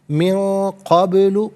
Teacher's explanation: खलक़तुक, मिन क़ब्लु, मिन में नून साकिन, इसके बाद क़ाफ हरफ़े इख़फ़ा है तो नून साकिन को इख़फ़ा के साथ पढ़ेंगे, यानी नाक में आवाज़ ले जाकर गुनगुनाना, इससे इख़फ़ा कहते हैं।